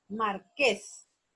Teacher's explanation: La sílaba tónica es ques